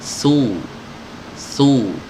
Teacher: ketika kita ucapkan dhammah di sini, dhammahnya ini harus disertai dengan desis ya, su, dan mulut kita ini mencucuk kemajukan ke depan ya, su, Su. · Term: sifat hams